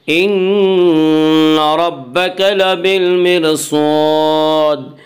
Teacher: إن نون مشدد غنہ ہوگا، غنہ کی مقدار ایک الف ہے